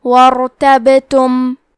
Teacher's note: واو کے بعد حرف الراء کو پڑھیں گے، کیونکہ یہاں را ساکن ہے، یہاں را کا حکم ہے تفخیم، تو ہم حرف الراء کو موٹی آواز میں پڑھیں گے. حرف البا پہ جزم ہے، تو یہاں با کا حکم ہے قلقلہ. قلقلہ کا معنی ہے حرف ساکن کو ہلانا، تو ہم یہ حرف کو ہلاتے ہوئے یہ کلمہ کو پڑھیں گے.